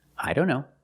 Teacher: Here, the T is between consonants, so we don't pronounce it.